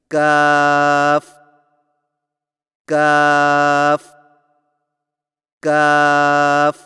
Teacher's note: زبان کی جڑ کو کوے کے قریب تالو پر لگا کر باریک آواز میں پڑھیں